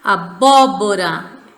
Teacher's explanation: é a sílaba tônica embora ela não esteja acentuada abóbora proparoxitona tônica é a antepenúltima sílaba